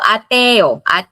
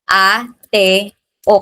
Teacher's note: two strong vowels occur together, they form two separate syllables